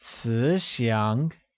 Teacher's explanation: Kind becomes 慈祥, which uses a mid-rising tone on both I and A